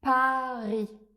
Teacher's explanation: Pour prononcer le son A, on va prononcer un A bien ouvert, comme dans Paris.